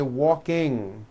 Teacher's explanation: Ing comes out of your nose. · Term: NG sound